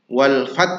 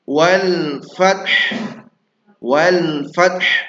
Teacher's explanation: Jadi bukan hanya ta saja, tapi ada efek dari ha. Wal fat. Kalau fat berarti t-nya saja, maka ha-nya harus mati juga. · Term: hnya mati